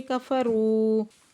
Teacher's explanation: کفروا رو پہ واو مدہ ہے، دو حرکت کھینچ کے پڑھیں گے.